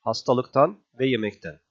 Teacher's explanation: bu D neye dönüşecektir t'ye yani Gelen sesi kendisi gibi sert yapacaktır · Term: ünsüz sertleşmesi